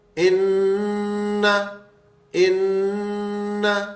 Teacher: بینہم تو یہ ایسے ہی رہے گا ان ان اب یہ کیونکہ حرف تشدید والا ہے تو اس لیے یہ دونوں نون ساکن بن جائیں گے. ان تھوڑا سا غننے کی آواز کو بڑھائیں گے تاکہ نون کی 2 دفعہ آواز بنے